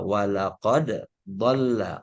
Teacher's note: Makanya dalnya harus tetap dibaca walaqad dhalla, tetap dibaca, bukan walaqad dhalla. Iya, tetap dalnya harus diizharkan, maksudnya istilahnya diizharkan, dalnya diqalqalahkan